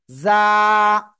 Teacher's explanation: জিহ্বার আগা সামনের নিচে 2 দাঁতের পেট ও আগার সাথে লাগিয়ে উচ্চারণ করব